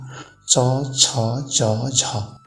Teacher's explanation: त्यसपछि स्पर्श सङ्घर्षी, स्पर्श पनि गर्ने र सङ्घर्ष, अलिकति सङ्घर्ष गरेर